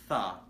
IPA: θ